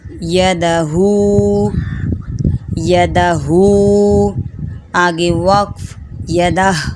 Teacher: آخری حرف کو جزم کر دینا ہے، اس کے بعد اس کو ادا کرنا ہے